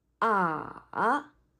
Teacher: The third tone is a falling rising tone.